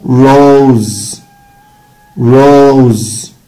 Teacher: طب اللونج او، قلنا اللونج او صوته او، افتح شفايفي وضم او او